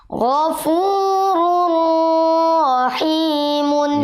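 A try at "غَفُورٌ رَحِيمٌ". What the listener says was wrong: kelamaan. Jangan kelamaan menahan roknya di sini.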